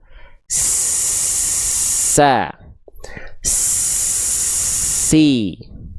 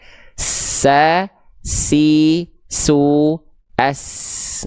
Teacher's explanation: kita alirkan nafas huruf sin, dan di saat yang bersamaan telinga kita akan mendengar suara ikut mengalir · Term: rokhwah